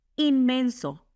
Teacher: Se pronuncia inmenso porque la n se asimila al mismo sonido m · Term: asimilación